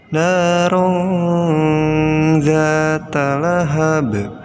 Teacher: merah lihat ada rok tanwin dan Win nya menghadapi Zal nah dibacanya jadi Nun nya disamarkan disertai guna atau didengungkan · nunnya disamarkan disertai gunnah atau didengungkan ya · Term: ikhfa